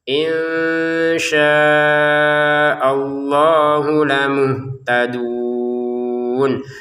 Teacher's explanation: Untuk syanya kita panjangin 5 harokat. Lafal Allahnya 2 harokat ya di atasnya walaupun harokatnya tidak berdiri ya karena ini Quran Madinah ya terbitan Turki.